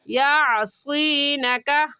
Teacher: عین حلق کے درمیانی حصے سے عین نکلتا ہے